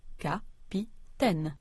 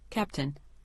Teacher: But when English speakers appropriated this word, they pronounced it in their own way, stressing the first syllable so much that the second syllable disappeared altogether